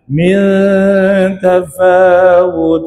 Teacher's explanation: Min tu ikhfa. Baca ikhfa ya. Dengung dua harakat.